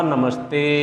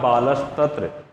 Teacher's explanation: इस स का उच्चारण स्थान भी दंत होता है